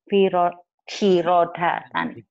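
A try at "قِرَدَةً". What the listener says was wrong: Titiknya dua. Kirodatan khasiina.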